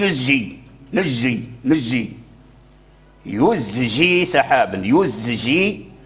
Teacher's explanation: يخرج الزاي من مخرجه ويعطيه الصفير، ثم عاد ينطق بالجيم ، وإلا اللسان يسرع إلى أن يجعل الزاي جيما أو يخلطه